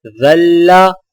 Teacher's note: زال کی آواز باریک اور نرم ہوتی ہے